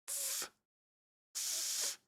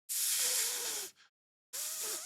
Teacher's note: My top teeth touch down on my bottom lip. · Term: fricative